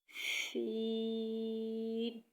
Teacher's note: سین میں سیٹی کی آواز آنی چاہیے اور سین کو تھوڑا لمبا کر کے پڑھیں کیونکہ اس پر مد ہے۔